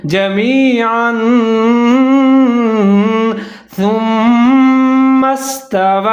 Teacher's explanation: یہاں پر سا کا خیال رکھنا ہے، اس کو سین نہیں پڑھنا، سیٹی نہیں بجانی ، سا کے اوپر پیش ہے، آگے میم مشدد ہے، میم